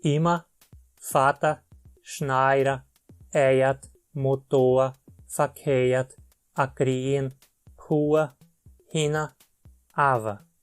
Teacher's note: A sequência ER, quando é átona, soa como um A curto.